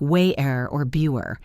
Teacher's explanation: in casual British speech, they use a glottal stop where the T is swallowed completely. It sounds like wayer or bewer.